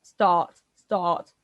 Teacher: make the sound that the dentist makes you do when you open your mouth which is the furthest back we can go and the lowest that we can go